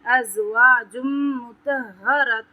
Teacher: ازواج یہاں پہ میم مشدد ہے، یہاں پہ ایک الف برابر غنہ ہوگا، تو آپ پر تفخیم کریں گے، ہا پہ شد ہے تو اس ہا کو دو مرتبہ پڑھیں گے، ایک بار طوا کے ساتھ پڑھیں گے، ایک بار زبر کے ساتھ پڑھیں گے اور اس کو دبا کے پڑھیں گے۔